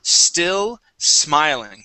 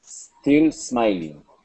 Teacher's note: you had said S, smiling, adding an E at the very beginning of the word